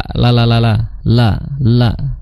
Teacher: la itu makhrajnya adalah di ujung lidah ya, ujung lidah bertemu dengan gusi, la ya seperti lamnya Indonesia, la ya.